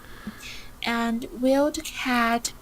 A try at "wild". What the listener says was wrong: Wild, not weld. Wild.